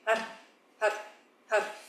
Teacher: Donc H-A-R, c'est un mantra qui part du nombril, un peu comme les arts martiaux, comme un H soufflé. Et quand le R, par contre, on vient rouler et en tapant le bout de la langue derrière les dents, sur le palais